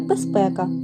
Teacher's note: літерою з вимовляємо і чуємо як безпека бо дзвінки з уподібнився під впливом наступного глухого п до с так би мовити оглушився